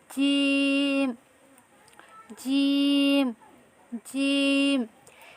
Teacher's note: আর এটা হচ্ছে জিম। জিম তো জিমের মাখরাজটি হচ্ছে জিহ্বার মধ্যখান উপরের তালুর সাথে লাগিয়ে পড়তে হবে। জিম জিম, চেষ্টা করুন জিহ্বার মধ্যখান উপরের তালুর সঙ্গে লাগিয়ে।